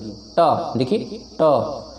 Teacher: अब देखिए आप लोग जब ट ठ ड ढ ण करेंगे तो ये आपकी जीवा फोल्ड हो जाएगी, ऊपर की तरफ थोड़ा सा फोल्ड होगी। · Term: मूर्धा